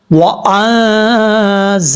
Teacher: واو کو پڑھتے وقت ہونٹ گول کریں گے